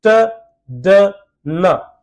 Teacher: जब आप ये तीनों साउंड बोल रहे हैं, your tongue is touches टू द alveolar ridge और ऑब्स्ट्रक्शन क्रिएट हो रही है एयर में